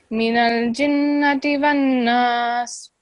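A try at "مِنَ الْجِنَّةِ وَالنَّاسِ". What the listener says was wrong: So this is a noon with a shadda, so you have to prolong that for 2 seconds with the nasal sound. Ghunna sound. Minal jinnati.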